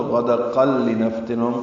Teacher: لِنَفْتِنَهُمْ فِيهِ پچھلی آیت کے ساتھ ملانا ہو تو غدقل لِنَفْتِنَهُمْ قاف لام سے ملا دیں گے، ادغام ہوگا، یہ ادغام کامل ہے